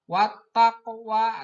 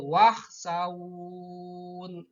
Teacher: meskipun waw mati sesudah harkat patah, maka membacanya harus panjang karena berhenti.